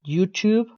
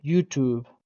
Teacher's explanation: Also, before U and EW, British people pronounce a semi-vowel. So a British speaker would say YouTube, whereas an American speaker would say YouTube.